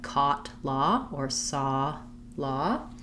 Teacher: thinking about that aw as that ah rounded vowel sound